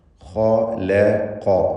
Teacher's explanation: ഖലഖ എന്ന പദത്തിൽ ഖാഇനും ഖാഫിനും തഫ്ഖീം കൊടുക്കണം. ഇസ്തിഅലാഇൻ്റെ 7 അക്ഷരങ്ങളിൽ പെട്ടതായതുകൊണ്ട് സ്വരഭാരത്തോടെ ആ 2 അക്ഷരങ്ങളെയും ഉച്ചരിക്കണം.